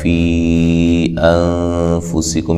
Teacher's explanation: یہاں جو مد ہے مد جائز ہے، یا مدہ کے بعد حمزہ دوسری کلمہ کے شروع میں ہے